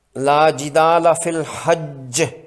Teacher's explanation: اس میں جیم مشدد پر زوردار قلقلہ ہوگا